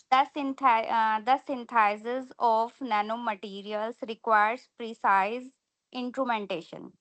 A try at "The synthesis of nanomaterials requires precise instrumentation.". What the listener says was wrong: good,